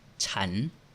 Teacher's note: Ang vowel naman ay a at nagtatabos sa consonant na no nu. Ang syllable ay living short kaya ang tone na gagamitin ay rising tone.